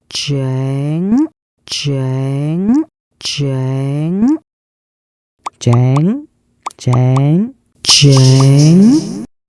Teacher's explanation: The last part is the tone, which is the tricky one. Go flat with a neutral tone, then raise your voice high at the very end.